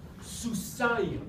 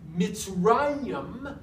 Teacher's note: in the dual, it's not an eem ending, it is an ayim ending. So you've got that diphthong there between the somic and the mem, very distinctive diphthong. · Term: dual ending